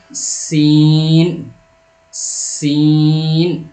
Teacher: جب سین بولیں گے تو ہلکی آواز ہوگی اور ساتھ میں ایئر بھی ہوگا، یعنی ہوا بھی ہوگی